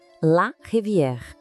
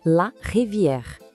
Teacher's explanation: Percebe aquele erre bem francês que vem lá do fundo da garganta? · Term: R bem francês